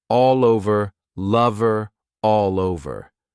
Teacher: Notice how I can link those sounds together by extending the L sound to the next word because it's a vowel.